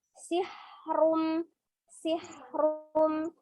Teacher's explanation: ada udara yang mengalir ketika mengucapkan bunyi huruf h